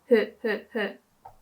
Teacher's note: like it's not that sound uh it's h h h so you don't really activate your throat so it's really just like blowing air whilst pronouncing the letter